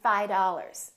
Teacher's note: that V in the word five just kind of disappears